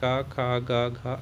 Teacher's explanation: कवर्ग कवर्ग को हम कंठस्थ कहते हैं